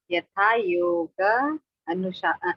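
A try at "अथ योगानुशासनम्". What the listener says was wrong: यथा आ रहा है आपका साउंड में, यथा आ रहा है, यथा नहीं, अथा अथा अथा।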